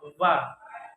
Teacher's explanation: Voice labiodental fricative sound